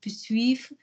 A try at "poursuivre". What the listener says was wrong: Pronounce the first vowel of poursuivre for me. The first vowel. Pour. Go lower.